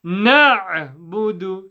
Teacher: the ayn comes from the middle of the throat. Na', okay?